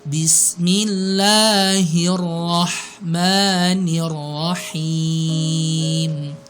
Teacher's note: kalau kita mengucapkan huruf ba itu teman-teman jangan sampai keluar nafas. Jangan bismillah tapi bismillah karena sifatnya dia memang enggak keluar nafas atau istilahnya jahar.